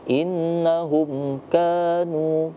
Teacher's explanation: innahum boleh didengungkan innya, tapi mim mati tidak boleh didengungkan